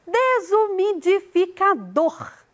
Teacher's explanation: dor é a sílaba tônica